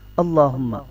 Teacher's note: یہ اللہ کا لام موٹا ہے